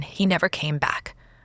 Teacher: a falling tone in he never came back shows sadness or finality